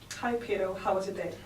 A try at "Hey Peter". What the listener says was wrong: So you need to say, "Hey Peter." You need it. You got to emphasize your R's. If you want to be American. Hey Peter. So ers are huge ones. Okay, big ones. You can't say Peter because you went like this. Peter. Peter.